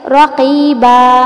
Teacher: یعنی کسی بھی کلمے کے آخر میں دو زبر کی تنوین ہے تو اس دو زبر کو الف سے بدل کر ایک الف کے برابر لمبا کرتے ہوئے وقف کریں گے، جیسے رقیباً، اس کو وقف میں پڑھیں گے رقیبا، ٹھیک ہے، دو زبر الف سے بدل گئی اور الف سے پہلے زبر ہے تو وہاں پر ہوگا حرف مدہ، الف مدہ، اور اس کو لمبا کریں گے الف کے برابر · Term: وقف بالابدال